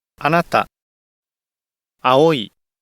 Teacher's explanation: there is an automatic rise on the second mora. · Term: second mora accent